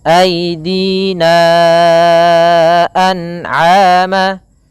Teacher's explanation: kita panjangkan aidina anama ya Empat harakat baru dilepaskan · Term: Mad Jaiz munfasil